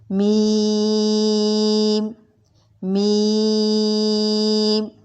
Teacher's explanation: میم دونوں ہونٹوں کے خشکی والے حصے سے ادا ہوگا۔ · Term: ہونٹوں سے ادا ہونے والا حرف